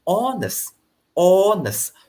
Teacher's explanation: for this word you don't pronounce the sound h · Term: silent h, silent H word